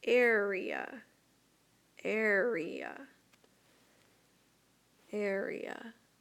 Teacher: we can hear that long vowel sound that comes from the e